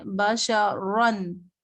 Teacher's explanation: جس را پر دو زبر ہوں وہ را پر موٹی پڑھی جائے گی